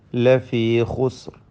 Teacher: രണ്ട് സുക്കൂനും ഹറക്കത്ത് പോലെ ശബ്ദം ചലിപ്പിക്കാതെ ഉച്ചരിക്കേണ്ടതാണ്. റായിനും തഫ്ഖീം നൽകണമെന്നത് ശ്രദ്ധേയമാണ്. റാ പെരുപ്പിച്ച് ഉച്ചരിക്കണം. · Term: സുക്കൂൻ